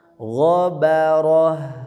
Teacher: Nah, ini perpaduan tebal tipis tebal ya, tipis. Gha tebal, ba tipis, ro tebal, ha ya tamar butoh ketika waqaf jadi hanya tipis.